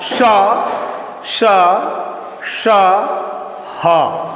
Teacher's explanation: श ह तोकि मुख से उष्म वायु बाहर आती है इन वर्णों के उच्चारण में इसीलिए इन्हें ऊष्म व्यंजन कहा जाता है। ये व्यंजन जो है वह अंगों के घर्षण और रगड़ से उत्पन्न होते हैं। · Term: उष्म व्यंजन